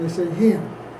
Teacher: Philadelphians raise the vowel A to air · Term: tensing of short A